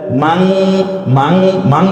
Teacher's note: তার কারণ হচ্ছে মান সরাসরি নটা উচ্চারণ না করে আমরা অনিশ্বার দিয়ে চন্দ্রবিন্দুর মতো করে একটু নাকের মধ্যে নিয়ে, সৌন্দর্যের জন্য, অন্য কোনো কারণ না।